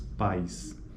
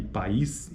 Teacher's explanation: Pais está na mesma sílaba, enquanto que país são sílabas diferentes, portanto, é só apenas uma sequência de vogais. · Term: ditongo